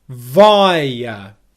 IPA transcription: ˈvaɪə